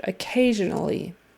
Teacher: that s in the middle is a z sound